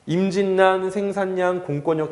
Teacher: 그래서 이거에 받침 니은을 더 중시하기 때문에 뒤에가 뒤에 있는 리을이 니은으로 바뀐다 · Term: 비음화